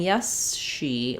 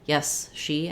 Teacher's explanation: my tongue is pulling back and my lips are moving forward as I transition from the S to the SH. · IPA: /s/ and /ʃ/